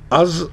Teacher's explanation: از اگر ہم بغیر ٹچ کیے بولیں گے تو اس میں شارپنس ہوگی, لیکن اس از میں اس کو جب زبان کو دانت کے نچلے حصے سے ٹچ کریں گے تو یہ از نکلے گا, اس میں شارپنس نہیں ہوگی. زال کا مخرج زبان کی نوک اور دانت کا نچلا سرا, اوپر کے دانت کا نچلا سرا